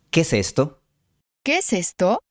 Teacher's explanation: la E de que se fusiona con la E de es. El resultado final es ¿qué es esto? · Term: fusión